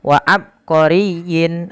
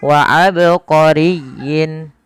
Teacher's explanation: sini adalah ba yang dibaca dengan bacaan qalqala Apa itu Qalqalah Qalqalah artinya memantul maka tatkala kita membaca ba di sini harus dipantulkan kesalahan yang terjadi adalah tidak memantulkan huruf ba contoh wa abqoriyin